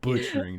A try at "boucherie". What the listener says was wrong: boucherie. There's a ch in there. There's no t.